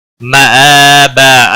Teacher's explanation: الف حمزہ کے اوپر کھڑی زبر ہے، ایک الف کے برابر کھینچ کر پڑھیں گے